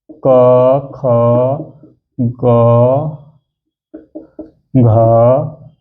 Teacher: यह सब किससे उच्चारित होते हैं तो कंठ से